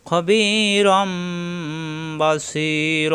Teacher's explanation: নুন সাকিন তানবিনকে মিম ধরে পরিবর্তন করে গুণ্য করে পড়তে হবে। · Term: ইকলাফ